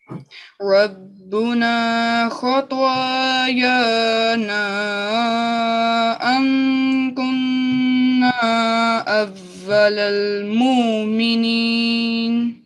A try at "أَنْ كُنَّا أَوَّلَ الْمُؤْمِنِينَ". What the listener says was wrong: یہ جو آپ نے پڑھا نا مومنین, یہاں پر سختی سے جھٹکا ہوگا. جیسے روکے ایک دم بریک لگ گئی نا, مؤمنین.